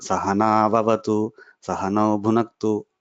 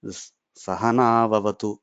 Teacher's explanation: the sa is intonation should come down and the na should go up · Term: Udatta, Anudatta, and Swarita